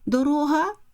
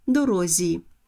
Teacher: звук г чергується Із звуком з